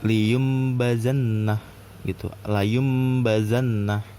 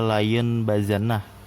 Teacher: Tapi karena ini ada iklab, jatuh kena hukum iklab karena ada nun sukun, setelahnya itu ada huruf ba, jadi layum bazannah gitu